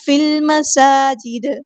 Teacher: فا کو لام کے ساتھ ملا دیں گے، حمزۃ الوصل وہاں ڈراپ ہو جائے گا. لام یہاں پہ لام قمریہ ہے. · سین کی سٹی ہم واضح کریں گے، حرکات مدہ ٹو کاؤنٹس لمبا کریں گے.